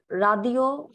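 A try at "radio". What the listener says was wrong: Not রাদিও but ঘাদিও। ঘাদিও, হ্যাঁ।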